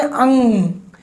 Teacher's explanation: इसका जो उच्चारण है, आप इसको लिख लीजिए, अनुस्वार का उच्चारण नाक से होता है, यानी अनुस्वार के उच्चारण में प्राणवायु नाक से निकलती है · इसको बोल के देखिए, जब आप कहते हैं अंग, तो आपकी जो जीभ है वो ऊपर तालू से टकराती है, उस जगह पर जहां आपकी कलगी लटकी हुई है